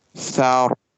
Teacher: We will stop on it. And the ra sound will be bold because it comes after fatha.